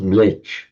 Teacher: mlecha in modern northern India it's pronounced just mlech